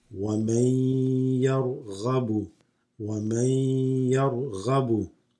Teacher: Because the ya comes after the noon, this assimilates, so it becomes وَمَنْ يَرْغَبُ.